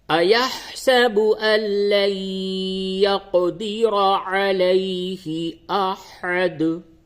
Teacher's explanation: نون ساکن کے بعد یا آیا، حروف یرملون میں سے یا آیا، ادغام مع الغنہ ہوگا